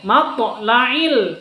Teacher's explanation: Matla'il, ada qalqalah sughra di sini. Huruf to bersukun atau mati di tengah kata, maka disebut dengan qalqalah sughra. To sukun itu hurufnya qalqalah.